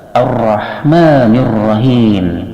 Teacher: Sedangkan hukum bacaan ra pada lafaz keduanya itu adalah tafhim dikarenakan ro-nya dipatahkan, dibaca tebal. · Ar-Rahmanir Rahim mengandung ilmu tajwid di sini termasuk alif lam samsiyah yang wajib idgham sehingga lamnya enggak dibaca